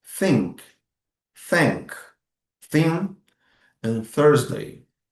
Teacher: nessa forma, você não usa as suas cordas vocais. Ou seja, você vai fazer um som quando você põe a mão na sua garganta, assim como a letra S em português, você pode perceber que não há som saindo das suas cordas vocais. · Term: voiceless sound